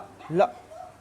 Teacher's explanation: जीभ के दोनों साइड आसपास से हवा निकल जाएगी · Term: पार्श्विक